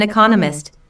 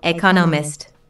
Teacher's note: four syllables in economist, with the stress on the second syllable